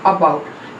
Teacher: next अबाउट में जो आ की साउंड होती है वो अबाउट, central vowel just below half open position and it is also unrounded vowel